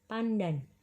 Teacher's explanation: Misalnya perubahan bunyi N yang biasanya diucapkan apicoalveolar diucapkan secara apicopalatal aman pandan. Perubahan nasal apicoalveolar N menjadi nasal apicopalatal N karena pengaruh secara regresif dari bunyi letup pada palatal D. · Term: asimilasi regresif